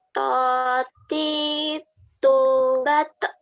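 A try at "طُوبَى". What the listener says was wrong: Nah, ini nyasar nih, nyasar ke huruf T ini.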